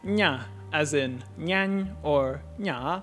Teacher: we need to bring the body of the tongue the rest of the way up, closing off airflow out the mouth, and then retract the velum, allowing air to escape through the nose. Overall, the process should be like making an N sound, except with your tongue placed here instead of here.